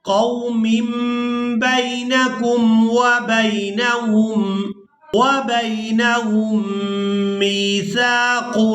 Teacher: تنوین میں جو نون کی آواز ہے اس کو ہم نے میم کے ساتھ بدل کر ادا کرنا ہے